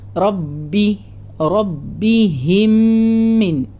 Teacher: അവിടെ റ ഹെവിയാന്ന് ബ ഡബിൾ ആക്കി പറയാ